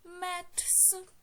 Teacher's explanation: читаємо як с тому що буква Т знову ж таки глуха приголосна